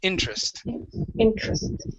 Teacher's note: in this word, the E is silent. We do not pronounce it